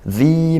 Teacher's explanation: Mad thobii kita baca panjang satu Alif atau dua harakat